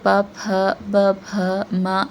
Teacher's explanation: letters that is produced by stopping air flow using the lips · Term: plosive